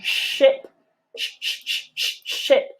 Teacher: pull that tongue back so that the tip is just where the palette begins to rise